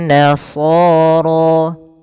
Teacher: Dan di sini rnya kita namakan dengan ro tafhim. Ro tafkhim yaitu ro yang dibaca dengan tebal.